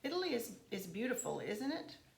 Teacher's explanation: I've got that falling tone that kind of lets that person know that I think it probably is beautiful.